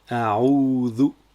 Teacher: on prolonge le son OU sur 2 temps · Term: mad